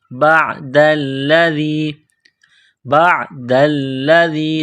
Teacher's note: بعد الذی، بعد الذی، دال کو لام کے ساتھ پلس کرنا ہے، لام کو دبانا ہے. دال کو پڑھتے وقت زبان تھوڑی سی باہر نکالیں گے.